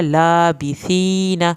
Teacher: सा को दांतों की नोक से पढ़ना है, या साकिन को खींच के पढ़ना है।